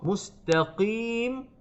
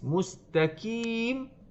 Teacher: Contohnya mustaqim, kita dengan baca huruf qaf, mustaqim, sepatutnya kita baca dengan tebal qaf, tapi kita baca dengan tipis